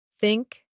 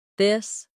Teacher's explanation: The tongue comes gently between the teeth. For think it's soft. For this it's voiced. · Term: th sound